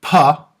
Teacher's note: long lag vot of the English pop where you can hear the breath of air that comes out after the plosive